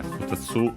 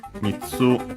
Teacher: futatsu, accent on the tsu